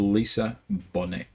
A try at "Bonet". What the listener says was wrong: We don't pronounce the T. Bonet.